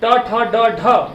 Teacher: ट ठ ड ढ उच्चारण कहां से होता है? मूर्धा से